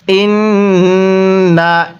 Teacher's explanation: রব্বানা, হামজা নুন জের ইন, নুন জবর না, ইন না। এখানে আমরা গুন্নাহ করব, কারণ মিম এবং নুনের উপর তাসদিদ হলে সেখানে গুন্নাহ করে পড়তে হয়। তো নুনের উপর তাসদিদ আছে, এজন্য আমরা এখানে গুন্নাহ করব।